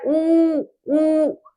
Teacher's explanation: जिन स्वरों के उच्चारण में ओष्ठ गोलाकार हो जाता है उन्हें क्या कहा जाता है? वृत्ताकार स्वर कहा जाता है। · हमारा जो होठ है वो कैसे हो रहा है? गोल हो रहा है।